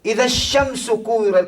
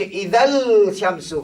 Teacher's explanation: Artinya lam ni tidak dibaca kerana dia telah masuk idgham dalam syin. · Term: alif lam syamsiah